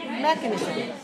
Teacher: rise on the first syllable